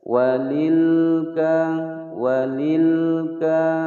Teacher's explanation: lam bersukun dibaca jelas, tidak boleh dipantulkan. Walilka tidak boleh ya, atau didengungkan.